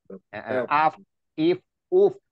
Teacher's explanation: Fa itu bertemunya perut bibir bawah dengan gigi seri atas. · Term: makharijul huruf fa